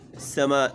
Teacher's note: سین کو سیٹی کی آواز نکالنی ہے، میم کے اوپر مد کرنا ہے، اس کو کھینچنا ہے۔